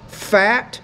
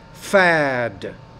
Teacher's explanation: When the T's at the end, the vowel which precedes it is shorter, as in the word fat. When the D's at the end, the vowel which precedes it's longer, as in the word fad.